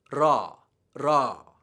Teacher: Your tongue actually flips up and touches the roof of your mouth for just an instant.